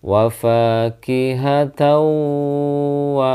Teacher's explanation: ada fathah tanwin bertemu dengan wau maka suara tanwinnya lebur ke huruf wau